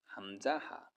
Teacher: হলকের শুরু হইতে 2টি হরফ উচ্চারিত হয়, হামজা, হা।